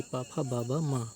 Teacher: हिंदी की बा ध्वनि किस में आती है? तो ओष्ठ में आती है